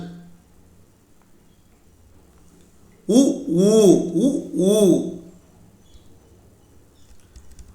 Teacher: இதழ்களை குவிப்பதால் பிறக்கும் எழுத்துக்கள்